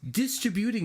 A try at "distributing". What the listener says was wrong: Distributing. You put the emphasis on the wrong syllable. Distributing. I think you were confused because you were still thinking of waterman.